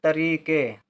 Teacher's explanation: तरीके से, तरीके, त खाली है क्यों, एकदम अलग से बोला जा रहा है, तरी, रा के साथ ई का उच्चारण लेकिन देर तक तो बड़ी की मात्रा, तरीके, ए, का के साथ ए का उच्चारण तो का में ए की मात्रा, तरीके से, सा के साथ ए का उच्चारण तो ए की मात्रा, तरीके से।